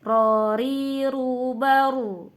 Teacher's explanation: Yang kelima yaitu takhrir. Takhrir itu artinya bergetar atau berulang. Jadi ada getaran ya. Getarnya itu 2-3 kali getar saja. Jadi jangan melebihi.